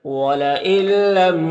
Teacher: نون کو لام سے ملا کر بغیر غنہ کے پڑھیں گے، اس کو ادغام تام کہتے ہیں